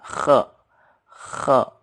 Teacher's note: Ini namanya khe. Khe. Ada getaran di tenggorokannya.